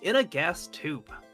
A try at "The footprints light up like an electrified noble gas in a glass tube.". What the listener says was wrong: Glass tube. You said gas tube.